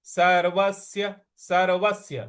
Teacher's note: सर्व और जो स है इस पर हमको आघात देना है